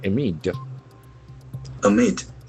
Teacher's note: we get one more word with two syllables and accent falls on the second syllable